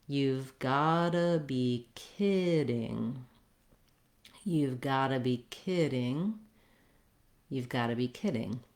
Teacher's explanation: in order to say that fluently with the right rhythm relative to the kidding, which is longer and stretched, I need to do reductions